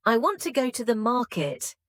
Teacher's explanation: For example, in the sentence I want to go to the market, the stressed words are want, go and market. The smaller words like I, to, and the are less stressed. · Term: sentence stress